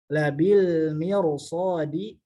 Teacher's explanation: ro-nya dibaca tebal karena ro sebelumnya kasroh menghadapi huruf isti'la. Maka anak kelompokkan contohnya ini pada pengucapan ro yang tebal.